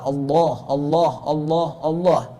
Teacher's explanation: ketika lamnya fathah maka dibaca tafkim tebal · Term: tafkhim